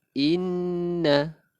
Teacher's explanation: Inna, hukum dia wajibul gunnah ataupun wajib dengung. Nun ada bertanda sabdu, wajib dengung. Kita tekankan lebih kurang 2 harakat.